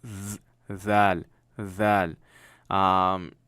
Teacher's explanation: So your tongue is touching just the tip of your teeth. Got a little vibration going. Zal. Again, for the lack of explanation I got, it's the gay version of Z, okay?